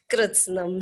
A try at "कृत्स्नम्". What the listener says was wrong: हाँ वो री की मात्रा है। री की, रू की नहीं है, री की है। नहीं। आ ई और री, तो वो री की मात्रा है, कृत्स्नम।